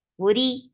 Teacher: Whenever ra is with kasra, it is light. Ri, 2 counts long. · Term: ra is light